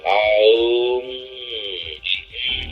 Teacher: The Hindus use the word Om, which would be spelled out A-U-M, because the letter A, Ah, is in the back of the throat. You push it through the vowel to Aum, it's at the lips. So the word Om comprehends the whole range of sound.